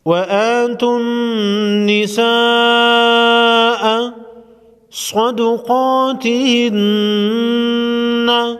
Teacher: صاد اور قاف دونوں حروف مستعلیہ میں سے ہے، موٹا پڑھیں گے، نون مشدد پر غنہ ہوگا۔